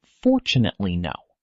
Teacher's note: Now compare it with the phrase, "Fortunately, no." Even though the second phrase has more syllables, the overall time it takes to say it is very similar. The extra syllables in the middle are spoken much faster, so that the rhythm between the stressed syllables stays balanced. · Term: stress timing